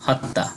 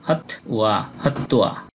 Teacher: আমরা বাংলা বইয়ে এই শব্দটা পেলে বলতাম হত্যা, কিন্তু এর সঠিক সংস্কৃত উচ্চারণ হবে হত ওয়া